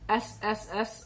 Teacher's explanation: Because these are voiceless sound, there should be no vibration.